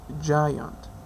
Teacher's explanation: j, which is voiced, lingual alveolar, affricative